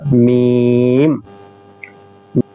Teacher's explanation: मीम दोनों होठों की खुश्की वाला हिस्सा